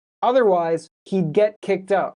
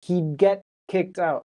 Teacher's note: The D is very quiet, very subtle. · So when people are speaking quickly, you might not really hear that D.